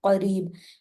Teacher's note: काफ मोटा होगा, रा बारीक होगा